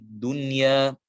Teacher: Di sini ada nun sukun bertemu dengan ya, maka kita katakan hukumnya adalah izhar, tidak boleh didengungkan